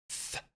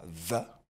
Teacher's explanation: Donc vous posez le doigt sur la gorge et vous allez constater que lorsque vous produisez ce son V, la gorge vibre